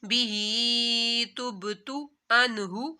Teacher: نون ساکن کے بعد ہا آ رہی ہے حروف حلقی میں سے تو یہاں پر غنہ نہیں کرنا